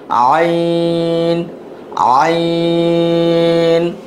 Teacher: এটা গলার ভিতর থেকে হবে